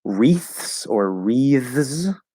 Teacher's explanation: Sometimes you can do voiced or voiceless th. It doesn't matter, but it's the same physical placement. It's just voice or not.